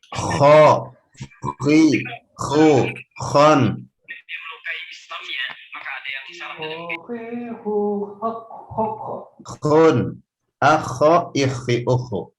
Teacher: Kha ini kita ketahui bersama adalah huruf halqiyah, yakni huruf-huruf yang makhrajnya ada di tengah disertai getaran. Ada getaran suara di kerongkongan. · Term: huruf kha